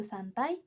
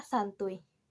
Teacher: terdapat perubahan phonem yang awalnya vokal a menjadi vokal U dan vokal I menjadi konsonan y